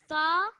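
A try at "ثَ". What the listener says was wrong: Again, you're pronouncing these for a little bit longer than they should be pronounced. This one, just for 1 second. Quick 1 second. Tha, tha, tha, tha.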